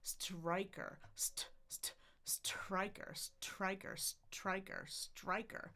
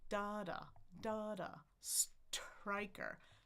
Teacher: Keep in mind that syllable stress. Start high, go a little lower.